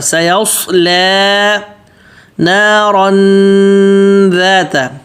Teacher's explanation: سیصلی صاد موٹا اور لام پتلا